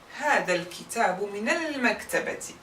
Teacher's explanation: We will replace sukun with fatha because of the kasra before. And we will pronounce the lam because mim is the moon letter